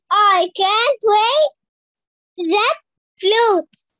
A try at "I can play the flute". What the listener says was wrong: لا بس مش عايزها متقطعة كده يلا تاني I اسمعيني I can play the flute